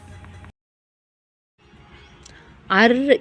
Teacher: அர் என்று சொல்லும்போது நம் நாக்கு மடிந்து மேல் தாடையை தொடுகிறது